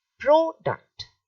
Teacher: so you're stressing the first part